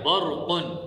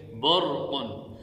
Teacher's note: اس مثال میں یہ بات سمجھیے کہ را ساکن ہے اور اس سے پہلے والے حرف کے اوپر زبر ہے، لہذا اس را کو موٹا پڑھیں گے